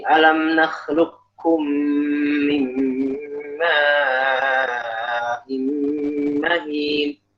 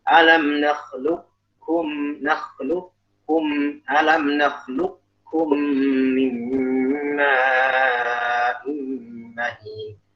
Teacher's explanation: Kalau kamil kita benar-benar jelas kepada kaf. Tidak ada sama sekali bekas huruf qaf baik sifat atau makhraj.